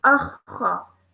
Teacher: Now, when you pull this into the sound that you made from step 3, you would sound it as akha. So I'm stressing on the kha and then producing the sound of the fatha. Akha. I'm pressing down on the kha. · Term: mushaddad letter